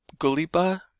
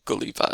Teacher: as you move from outer inlet, upper inlet kind of area into more of this like inland area, you've got B's becoming V's in those words